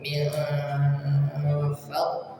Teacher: min fadlillah ada nun sukun ketemu huruf fa, dengungkan dulu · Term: ikhfa